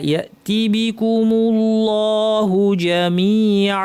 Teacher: তিবি পরপর আসবে টান ছাড়া, অনেকে ভুলে দেখা যাবে তিবি এভাবে বলছেন না, বিকুমুল্লাহু, আল্লাহের লাম ভারী হবে। ইয়াতিবিকুমুল্লাহুতে টান নাই, জামিআ, ইয়াতিবিকুমুল্লাহু জামিআ।